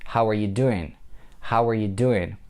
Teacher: doing is the last word here, and we have to give it a boost. We have to pronounce it louder than the rest of the sentence word.